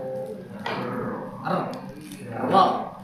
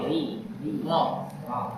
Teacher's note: Kemudian yang kelima adalah takrir. Takrir yaitu adalah suara yang bergetar di ujung lidah.